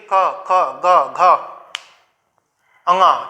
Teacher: इसका जो उच्चारण स्थान है वो है कंठ। इसको कोमल तालु भी बोला जाता है। ठीक, असल में अब इसका उच्चारण कंठ से कम कोमल तालु से ज्यादा हो गया है।